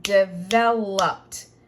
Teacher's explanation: once I put the ED, there is no extra syllable. It's still 3. Developed. But it's going to sound like a T on the end.